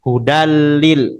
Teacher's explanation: Hudalil muttaqin atau mirrabbihim langsung masuk idgham masuk tanpa dengung.